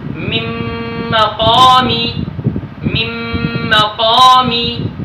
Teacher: تو ادھر نون ساکن کا میم میں ادغام مع الغنہ ہوا ہے